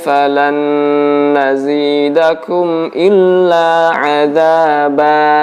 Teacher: tanin Fatihah top Hai ayat yang berakhiran dengan tanin Fatah maka panjangnya hanya menjadi satu Alif atau dua harokat tidak boleh lebih